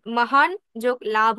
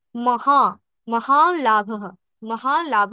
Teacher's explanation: নকার এর পরে যখন ল থাকে তখন হচ্ছে পূর্বস্বরে চন্দ্রবিন্দু হয় বা অনুনাসিক উচ্চারিত হয়। তাই এখানে যখন মহান যোগ লাভ আমরা যুক্ত করেছি তখন এখানে মহা, মহান লাভ, মহান লাভ বলেছি।